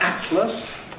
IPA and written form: ˈætləs (atlas)